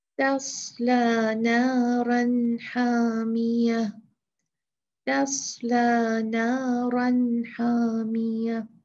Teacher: لیکن اس میں کیا کرنا ہے کہ ہم نے اپنے دماغ سے بہت زیادہ جو ہے وہ ہوشیار اور الرٹ رہنا ہے کہ اب صاد سے پہلے تا ہے تو اس کو ہم نے تا کو موٹا نہیں پڑھنا، پر نہیں پڑھنا۔ · پڑھنا کیا چاہیے؟ موٹا صاد، اور باریک کیا ہے؟ تا۔